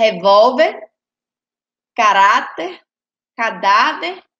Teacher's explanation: palavra ela é paroxítona e termina em R paroxítona porque pro porque a penúltima sílaba ela é a mais forte